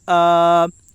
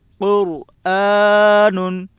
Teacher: حمزہ کے اوپر کھڑا زبر ہے، کھڑا زبر برابر ہوتا ہے الف مدہ کے، اس لیے کھڑا زبر کو ایک الف کے برابر کھینچ کر پڑھیں